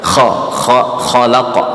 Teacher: cuman satu ayunan kayak mau berdahak tapi jangan dikeluarkan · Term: qalqalah